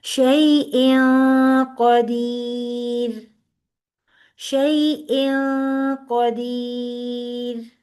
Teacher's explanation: تو یہاں پہ ہم چھپائیں گے نون کی آواز کو، شیئن نہیں پڑھیں گے، بلکہ ہم نون کی آواز کو ناک میں لے جائیں گے اور وہ غنہ ہو جائے گی. اور پھر ایسی آواز آئے گی، شیئن قدیر، شیئن قدیر. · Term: اخفا